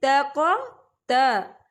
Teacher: تا جو ہے یہ باریک پڑھا جانے والا حروف ہے، اور قاف جو ہے یہ موٹا پڑھا جانے والا حروف ہے